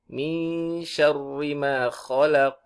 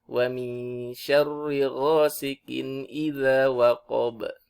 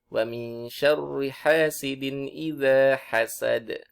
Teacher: Nah, itu ada pantulan semuanya. Ada pantulan qaf, ada pantulan ba, ada pantulan huruf dal.